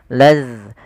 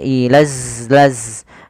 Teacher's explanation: Makhrajnya adalah ujung lidah kita menempel dengan gigi seri atas kita. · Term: huruf zal